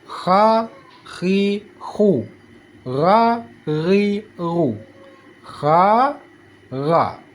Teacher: Kha seperti ada kerokan kalau gha seperti ada get get getaran